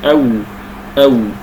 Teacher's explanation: والواو تخرج بتدوير الشفتين ايضا من الشفتين